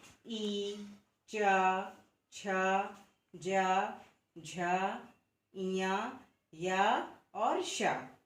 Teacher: तालु से हम ई, च, छ, ज, झ, इया, या और श, इन वर्णों का उच्चारण तालु से करते हैं।